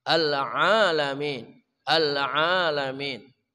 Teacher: Ain sama dengan hak tengah kerongkongan.